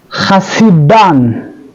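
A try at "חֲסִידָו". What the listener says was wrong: That's a vav, the last letter of vav. So typically we would have kamatz yud vav when we want to pronounce av, chasidav. But the verse eliminates the kamatz and the yud.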